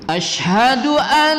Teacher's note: Kemudian an nun bertasydid lamakan sedikit.